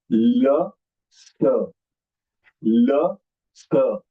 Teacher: Both are Ustavya, but one is Antahastaha and Sa is Ushmakshar.